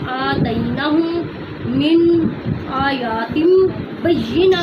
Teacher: یا کو لمبا نہیں کرنا کیونکہ اس پر تو کڑی زبر نہیں ہے نا، آیات آ پر ہے